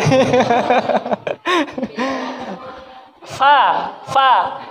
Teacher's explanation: gigi atas ketemu bibir bawah bagian dalam